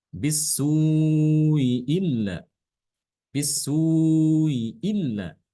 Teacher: adalah ee membaca dengan tashil ya dengan cara mentashhilkan Hamzah pertamanya kemudian huruf sebelum Hamzah ini yaitu huruf mad assu itu dibaca empat harakat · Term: 4 harokat